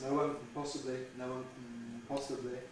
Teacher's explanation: we could have syllabic N instead of schwa N, quite naturally